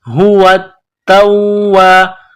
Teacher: تا کے اوپر تشدید ہے، واو کے اوپر تشدید ہے، تو دونوں میں سختی کرنی ہے